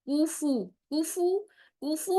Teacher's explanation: काफ की पेश फा की पेश दोनों गोल होठों से प्रॉपर गोल होठों से अदा करेंगी · کاف کی پیش، فا کی پیش، دونوں گول ہونٹوں سے، پراپر گول ہونٹوں سے ادا کریں گی، بہت اچھی خوبصورتی آئے گی۔